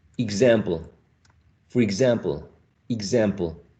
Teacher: we might find the combination of two sounds, k and s, k and s. But in this case, we have g and z.